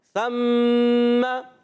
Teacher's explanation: मीम मुशद्दद या नून मुशद्दद कहीं पर भी आ जाए उसमें हमेशा एक अलिफ का गुन्ना होता है